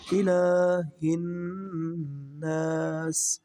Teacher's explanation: اگلی آیت مبارکہ میں لام کے اوپر کھڑا زبر ہے تو لام کو ہم لمبا پڑھیں گے